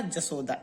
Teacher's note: तालव्य स नहीं बल्कि दंत स होगा